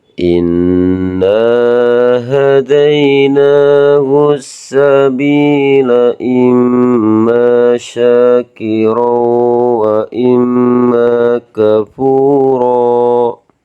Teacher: Kalau ada nun bertasjid dan mim bertasjid, pasti kita baca dalam ilmu tajwid adalah hukum bacaan hunnah. Dan cara bacanya harus ditekan selama dua ketukan.